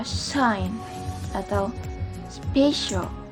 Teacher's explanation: konsonan ini tergolong dalam palato alveolar, frikatif, dan juga voiceless sound.